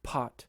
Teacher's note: we say pot with a puff of air. That's called aspiration.